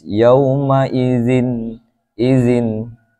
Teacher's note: Yauma idzin, jadinya ikhfa ya. Atau yauma idzin dengung, tidak boleh. Harus dibaca terang dan jelas.